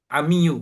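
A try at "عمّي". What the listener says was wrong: Ini salah. salah. Tasdidnya itu di atas mim, yang benar. ammi.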